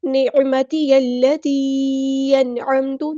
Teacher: یا کو ہم نے لام کے ساتھ ملا دینا ہے، حمزۃ الوصل ہمارا ڈراپ ہو جائے گا